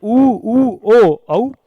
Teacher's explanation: स्वर जिनके उच्चारण में हमारे होठ गोलाकार या वृत्ताकार अवस्था में होते हैं व्रतमुखी स्वर कहलाते हैं